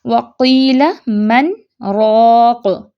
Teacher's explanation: اس میں من کا نون ظاہر کرتے ہیں، ہلکا سا پاز لیتے ہیں، سانس نہیں توڑنا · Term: سکتہ